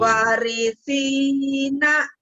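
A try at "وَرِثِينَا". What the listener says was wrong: Wah, panjangnya wanya, Bu. Warisina. Warisina.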